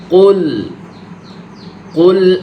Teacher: প্রথমে কু বলার সময় মুখটা কি দুই ঠোঁট গোল হবে, পরে আবার ফ্ল্যাট হয়ে যাবে।